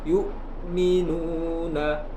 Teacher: perhatikan hamzah jangan sampai mengalir, harus ditekan